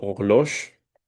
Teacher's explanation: je prononce pas la H. Je dis les mots comme si, comme s'ils commençaient avec la O